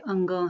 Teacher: इसमें पहले जो है स्वर आता है, उसके बाद जो है नासिकी व्यंजन का उच्चारण होता है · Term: अयोगवाह